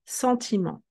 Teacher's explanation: we drop the T because it doesn't have a vowel to be pronounced. Let's continue.